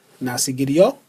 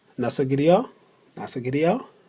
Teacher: phrase not so giddy your which would be pronounced nasi gidiyor for some reason it just dropped that last letter that last consonant